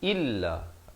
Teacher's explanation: kasrah bunyi i, bukan bunyi e